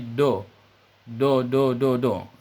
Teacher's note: ketika huruf Dho kita bunyikan dari ujung lidah saja bunyinya menjadi do do do do do do ini kesalahan